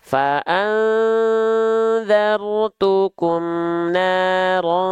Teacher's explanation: nun sukun ketemu dalal tanwin ketemu ta itu kan ikhfa maka kita tahan faanzartukum Nar ta nah ditahannya dua harakat kadar gunah masih banyak